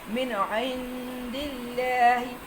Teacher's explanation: اور عند کے اوپر اخفاء کا قاعدہ، نون کو چھپانا ہے